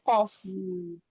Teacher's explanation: Datar ujungah datar tengah lidahnya datar yang naik cuman pangkal. Ini qof.